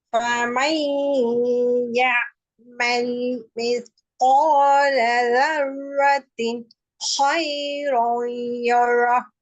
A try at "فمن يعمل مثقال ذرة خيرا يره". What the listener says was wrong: ذرத்தின் என்றதுக்கு பின்னால மூச்சு போகக்கூடாது.